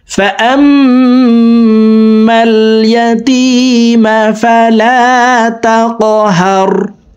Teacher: কফ কলকলার হরফ উপরের দিকে ধাবিত করে ধাক্কা দিয়ে উচ্চারণ করতে হবে